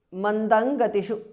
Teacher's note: Mandang Gatishu because of Sandhi. Anuswara changes to Nga there.